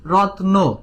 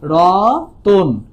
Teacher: ছিল কি রত্ন, হলো কি রতন, মাঝখানে কি আসলো ও স্বরধ্বনি। তাহলে এটা আমি উচ্চারণ করে বুঝলাম এই যে মাঝখানে স্বরধ্বনি যুক্ত হলো, এই কারণে আমরা এটাকে বলছি মধ্য স্বরাগম।